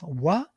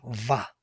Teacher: they are defined like labials, wa, and dental labials, va. 2 different modifications of the same meaningful sound.